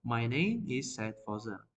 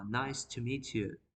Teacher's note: at the beginning our voice in a higher position and when I ended my sentence we can hear the decreasing of our voice